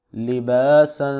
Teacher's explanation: لبا، لبا پر مدہ کریں گے، سین دو زبر سن، لباسا، سین حروف صفیریہ سیٹی کی آواز سے